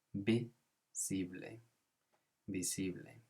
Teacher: Another point here is with the word visible. So the V becomes a B sound in Spanish.